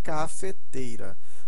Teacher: o acréscimo de um T, que é chamado de consoante de ligação